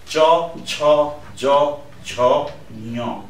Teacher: त्यस्तै च palatal है, टच गर्ने प्यालेटलाई, आफ्नो तालुलाई.